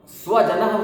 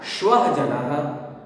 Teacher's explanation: श तालव्य श है, श ये तालु में जीभ स्पर्श करती है। जब उच्चारण करते समय श करेंगे तो श्व उच्चारण हो जाएगा, दंत का उच्चारण नहीं होगा, तालु का, तालव्य वर्ण, तालव्य श का उच्चारण होगा, तो इसका अर्थ बदल जाएगा।